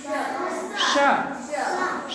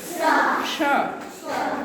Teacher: तालव्य श को तुम्हारी जीभ तालू पर जानी चाहिए। जैसे सीटी में आवाज निकलती है वैसे तुमको श।